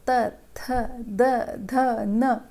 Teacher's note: फिर आता है त वर्ग, इनका उच्चारण दांतों के स्पर्श से होता है, यानी कि दांतों को हम लोग अपनी टीथ के पीछे जीभ टच करते हैं।